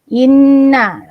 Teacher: Ni nun sabdu kena 2 harakat. Inna banyak dengung kat sini.